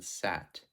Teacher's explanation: In this case, this diagram is showing how to pronounce the ah sound, like in sat, where the mouth is relatively open and the highest point, or the tip of the tongue, is fairly low in the mouth from the roof of the mouth